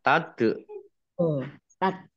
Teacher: Dal tasdid bacaan qolqalah dibaca memantul ditampakkan pantulannya